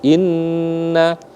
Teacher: Jadi kita tekan, kita tahan, kita gunnahkan selama 2 harakat setara dengan 1 alif ya, 1 alif timbangannya 2 ketukan, maka dia dibaca gunnah, ditahan selama 2 harakat karena ada tasydid di atas mim. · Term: gunnah musyaddah